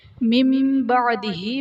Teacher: نون ساکن کو میم سے بدل کر اخفا کریں گے، یعنی غنہ کر کے پڑھیں گے، یہاں پر اقلاب کا قاعدہ ہوگا۔